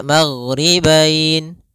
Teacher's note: Panjang untuk mad lin sendiri kita boleh panjangkan 2 harokat, boleh 4 harokat, boleh pula 6 harokat. Maka kita boleh membacanya maghribain 2 harokat, maghribain 4 harokat, maghribain 6 harokat.